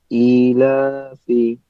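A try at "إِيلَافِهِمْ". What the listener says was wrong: যে ইলাফি, ইলাতে টান দিলেন, আমি বললাম যে এটা ভাই মধ্যে বদল হয়েছে, এই জন্য টান দিলেন। খারা জবর হইলে টান দিতে হয় না খারাজের? হ্যাঁ, খালি হামজার নিচে আসার কারণে জাস্ট নামটা হইলে কি মধ্যে বদল, এই একটু কথাই।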